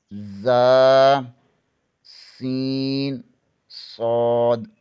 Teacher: زبان کی نوک ثنائے سفلی یعنی نیچے والے 2 دانتوں سے لگے تو ذا، سین، صاد ادا ہوتے ہیں